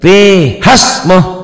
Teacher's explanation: Matobinya jadi pendek karena ketemu sukun